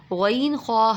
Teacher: غین خا حلق کے اوپر والے حصے سے